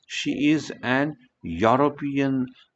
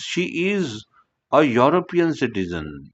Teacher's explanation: युरोपियन म्हणून ई जरी दिसत असला तरी त्याचा साऊंड वाय प्रमाणे होतो